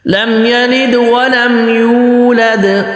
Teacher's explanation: ولم، لم یلد ولم اس طریقے سے قلقلہ ہوگا، لیکن آگے ولم یولد دوسرے والے دال میں قلقلہ زیادہ ہوگا ، اور یو کھینچنا ہے، ولم یولد، ولم کر کے یولد،